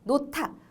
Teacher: 히읗과 디귿이 만나 티읕이 되니까요